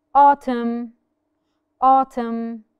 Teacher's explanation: so the N is silent